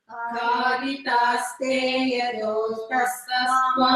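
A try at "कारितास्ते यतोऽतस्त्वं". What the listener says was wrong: Avagraha. Yato tastvam. After to there is avagraha. So one extra matra for that.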